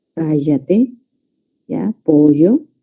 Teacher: En la costa de nuestro país tenemos el fenómeno de yeísmo. La doble E y la Y, todo lo pronunciamos igual. Cállate, ¿ya?